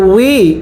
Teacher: ওয়াওটা উচ্চারণের সময় ঠোঁটগুলো গোল করবেন